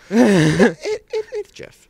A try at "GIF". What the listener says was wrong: That's a J. That's spelled with a J. GIF is spelled with a G.